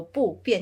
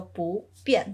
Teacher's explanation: You don't go 不变, you go 不变. So 不 turns into a second tone.